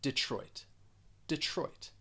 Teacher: has 2 syllables. The stress is on that second syllable. And in that first syllable, even though we're spelling it with E, it's just going to sound like I.